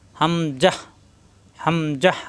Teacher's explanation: হামজা এবং আলিফের কোন টান নাই দ্রুত উচ্চারণ করতে হবে